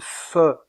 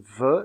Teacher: Aussi appelle-t-on ces deux constrictives des labiodentales. La consonne fe est une consonne sourde, tandis que la consonne ve est une consonne sonore.